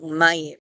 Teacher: It's very difficult to say ma yim without really having it turn into that diphthong, mayim.